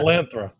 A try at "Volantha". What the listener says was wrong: But Volantha. There's no R.